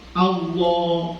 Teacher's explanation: termasuk lafaz jalalah itu dibaca tebal ya panjangnya juga ikut tebal